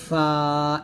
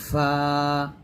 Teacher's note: নিচের ঠোঁটের পেট সামনের উপরে দুই দাঁতের আগার সঙ্গে লাগিয়ে ফা উচ্চারণ করতে হয়